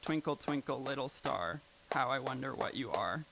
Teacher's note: So like twinkle, twinkle, little star, how I wonder what you are. There's like an unstressed syllable between every stressed syllable. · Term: iambic